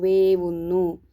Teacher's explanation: സന്ധിയിലെ ആദ്യ വർണ്ണം താലവ്യമായിട്ടും അവിടെ വകാരം ആഗമിക്കുന്നു